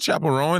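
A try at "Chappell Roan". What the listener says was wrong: Her name is Roan. Her name is not Chapel Rowan. Roan. Like prone or a bone. You don't say a Bowen.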